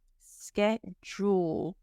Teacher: now the D sounds like a j SK jeel Jewel like jewelry schedule and this is the American